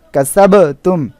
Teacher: এখানে বা অক্ষরের উপরে জজম অর্থাৎ এখানে কলকলা হবে